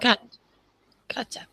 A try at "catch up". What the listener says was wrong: It just sounded like you said cat up or something. It didn't sound like you had the ch sound.